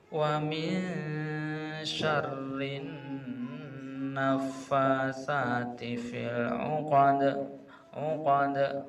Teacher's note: Kemudian ada na ditasdid lagi. Na tasdid gunnah musadadah, harus didengungkan terlebih dahulu.